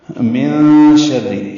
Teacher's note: من شر، نون کی آواز کو چھپائیں گے، یہ چھپانا دراصل اخفا ہے۔ من شر، شین میں تفشی پائی جاتی ہے، آواز منہ میں پھیلتی ہے، را سے ملائیں گے، را کے نیچے زیر ہے، را باریک پڑھیں گے۔